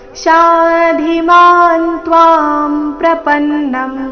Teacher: ಶಾ ದೀರ್ಘ ಧಿ ಮಹಾಪ್ರಾಣ ರಸ್ವ